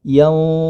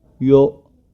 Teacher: Yanti, huruf ya tetap iya ya. Huruf ya tetap dibaca iya, jangan sampai yo ya.